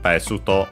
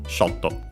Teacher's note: It's accented on the first syllable. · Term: accent on the first syllable